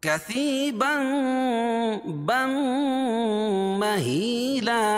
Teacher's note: تنوین کے بعد ادغام مع الغنہ کے 4 حرفوں میں سے میم آ جائے گی تو یہاں غنہ ہوگا